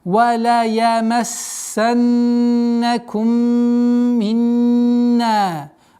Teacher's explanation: Вала ямассаннакум. Удержание, удвоение сина. Потом уходим на назализацию в размере двух огласовок.